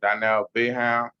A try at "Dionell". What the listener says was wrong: Okay, so you pronounce it with, like you didn't have an I, it's Dionell. Okay, and how are you pronouncing it? Dionell, okay, Dionell.